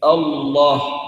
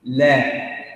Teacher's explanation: يصاحب اللام المفخمة تقعر لوسط اللسان وتضييق في الحلق